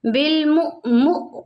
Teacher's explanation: بالمؤمن پہ حمزہ ساکنہ ہے اس کو ہم نے جھٹکا دے کر پڑھنا ہے